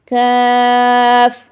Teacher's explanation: قاف کے قریب ہی زبان کی جڑ جب اوپر کے تالو سے ٹکر کھائے تو پھر یہ ادا ہوتا ہے، مگر یہ باریک ہوتا ہے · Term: باریک کاف